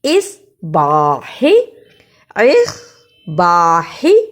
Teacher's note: اصباح، الف زیر صاد، اسے الف زیر صاد اس نہیں کہنا، سین کی آواز نہیں آنی چاہیے۔ یہاں صاد لکھا ہے اور صاد کو موٹا پڑھتے ہیں، اس لیے الف زیر صاد، با زبر با، حاضر ہے، اصباح، اصباح۔